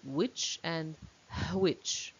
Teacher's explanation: and which so for most speakers of English these are homophones for Scottish and Irish speakers they say which and which so there's a h element in the second word